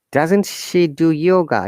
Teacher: Our tone must go high, higher tone, a rising tone.